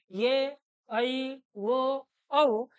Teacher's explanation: चार काय सांगितले होते संयुक्त स्वर सांगितले होते ए ओ औ या चार पैकी जर पाहिलं तर हे चारही स्वर आपल्याला संयुक्त आहेत